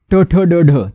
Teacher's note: एक गट तयार केला ट ठ ड ढ तालव्य आहेत म्हणजे जीभ उलटी फिरते 90 अंशावर आणि टाळूला लागते